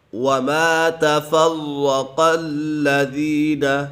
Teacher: وما تفرق الذین، وما الف مدہ ہے، الف مدہ کو ایک الف یعنی 2 حرکات کے برابر کھینچ کر پڑھیں گے۔ تفرق و مشدد ایسے جماعوں کے ساتھ پڑھیں گے۔